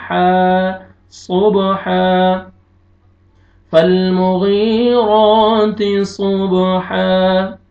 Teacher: وقف کی صورت میں الف سے پہلے فتحہ زبر ہو جائے گا تو الف مدہ ہو جائے گا